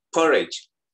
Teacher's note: tidak I jelas ya, tapi agak ke E-nya. I-nya agak ke E, porridge.